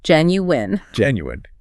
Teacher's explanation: The mechanical trick here is the G. It's a soft J sound, and the ending actually sounds like win.